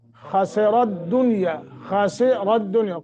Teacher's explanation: خا اور را دونوں کو موٹا کرنا ہے